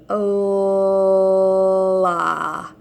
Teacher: we want that L sound to be really long. Hold it for a long time.